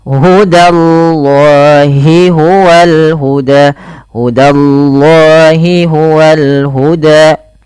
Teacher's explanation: Hudallahi danya tipis jangan langsung hudallah tapi da tipis allnya tebal